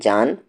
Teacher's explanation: جا کو کھینچتے ہوئے نون ملائیں گے